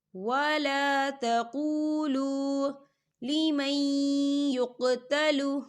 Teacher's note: ولا تقولوا، یہاں دیکھیں قولو، دونوں جگہوں پر واو ساکن ہے اور واو ساکن سے پہلے پیش ہے تو یہاں پر واو مدہ ہو رہا ہے، تو ہم اسے 2 حرکت کے برابر کھینچ کے پڑھیں گے